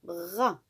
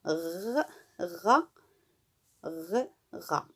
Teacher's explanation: en portant le bout de la langue jusqu'au haut du palais, de sorte qu'étant frôlée par l'air qui sort avec force, elle lui cède et revient toujours au même endroit, faisant une manière de tremblement